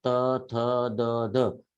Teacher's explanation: त थ द ध यांचा उच्चार करताना आपल्या जिभेचा स्पर्श समोरच्या वरच्या दाताच्या मागच्या बाजूला होतो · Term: दंत्य